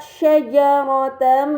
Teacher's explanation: terdapat harakat fathah Tain yang bertemu dengan huruf mim ini dinamakan idgham B ghunnah maka harakat fathah Tain tersebut harus dibaca secara melebur dengan gunah yang dipanjangkan